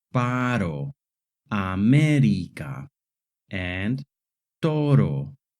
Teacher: And the short tap R sound, like in the words paro, América, and toro.